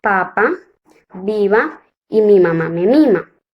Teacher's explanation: que producen el sonido uno de ellos es el beat labial los órganos que intervienen en el sonido son los dos labios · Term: bilabial